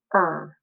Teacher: he just kind of puts his tongue up in the back and he says er